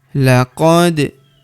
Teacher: huruf da berharokat sukun kita pantulkan atau kita qalqalahkan